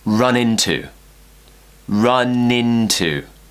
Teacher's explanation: we're linking N and I, consonant, vowel, link.